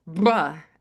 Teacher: bilabial trills, bruh, as a consonant